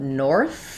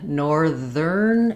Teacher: even though we have north, this th is voiceless. No vibration here. In NOR-thern, it changes to the voiced ther sound.